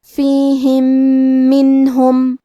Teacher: کلمت منہم، کیونکہ یہاں حکم ہے ادغام تو ہم پہلے میم کو دوسرے میم میں ملا کے ایک ہی میم غنہ اور تشدید کے ساتھ پڑھیں گے